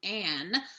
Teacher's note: that's an example of consonant cluster reduction near the end of the word